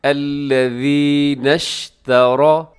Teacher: را موٹا پڑھا جائے گا کیونکہ را کے اوپر زبر ہے